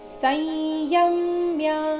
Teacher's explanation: ಕರ್ಮೇಂದ್ರಿಯಾಣಿ ಸೈಯಂ ಸ ನಂತರ ಇರೋ ಅನುಸ್ವಾರದ ಉಚ್ಚಾರಣೆ ಕಡೆ ಇಲ್ಲಿ ಗಮನ ಕೊಡಬೇಕು ಯ ಮೇಲೆ ಆಘಾತ ಬರಬೇಕು ಮುಂದೆ ಮ್ಯ ಎಂಬ ಸಂಯುಕ್ತ ಅಕ್ಷರ ಇದ್ದ ಕಾರಣ